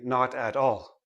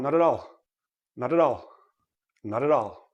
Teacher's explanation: when a word ends in a consonant and the next word begins in a vowel make sure you roll it in right roll the consonant into the vowel